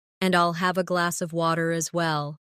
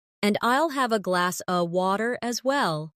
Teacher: In connected speech, glass of sounds like glass a.